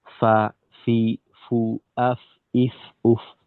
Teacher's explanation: যেমন ধরেন ফা যখন আমরা উচ্চারণ করব, যে ফা, ফি, ফু, আফ, ইফ, উফ, এই উচ্চারণের সময় আওয়াজের সাথে সাথে আমাদের মুখ থেকে কিছুটা বাতাস বের হবে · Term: হামস